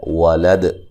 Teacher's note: یہاں دال پہ قلقلہ کریں گے، ٹھیک ہے، دال کو ہلا کے پڑھیں گے · واو کو ادا کرتے ہونٹوں کو گول کرنا ہے